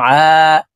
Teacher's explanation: আইন হরফকে হলকের মধ্যখান থেকে চাপ দিয়ে উচ্চারণ করব কারণ আইনের মখরাজ হলকের মধ্যখান থেকে হবে আইন আলিফ জবর আ